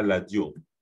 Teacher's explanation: On rappelle que en Lingala, le R se prononce L.